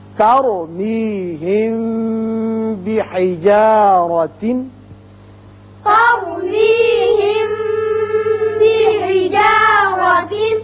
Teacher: جب میم ساکن کے بعد با آ جائے تو اسے اخفائے شفوی کہتے ہیں، یہاں ایک الف کے برابر آواز ٹھہرتی ہے